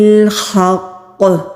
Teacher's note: قلقلہ مضبوطی سے ہوگا کیونکہ قوف کے اوپر تشدید ہے تو تشدید کے اوپر زور دیا جاتا ہے۔